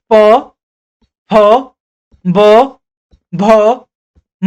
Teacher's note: पवर्ग में हमारे पास प, फ, ब, भ, म शामिल है। इनका जो उच्चारण स्थान है वो ओठों से है।